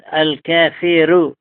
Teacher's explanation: أزرق له قراءة الكافر بالإفراد وترقيق الراء